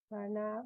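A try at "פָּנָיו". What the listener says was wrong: No, it's just the vav. So it's panav, panav, right?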